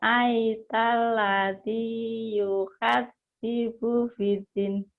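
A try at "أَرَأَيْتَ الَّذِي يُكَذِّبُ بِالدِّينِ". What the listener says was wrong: Dinnya panjang ini, madari disukun. Karena ada matobi'i. Panjang.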